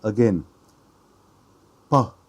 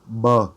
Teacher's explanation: feel more in front at your lips and going out but with B you feel more in your throat more vibration in your throat